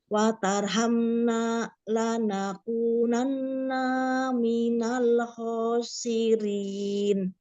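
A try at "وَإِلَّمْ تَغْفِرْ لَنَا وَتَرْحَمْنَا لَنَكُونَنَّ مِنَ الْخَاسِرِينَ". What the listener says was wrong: Ya, nanti apa kalau tidak kurang natural nanti Umi berat bacanya ya. Jangan ini baru sedikit ya, harus diringankan. Jadi diringankan lagi suaranya, jangan dihentak-hentak ya. Datar saja dulu.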